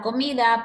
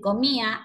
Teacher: Aquí podemos ver que omite la letra D. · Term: omitir letras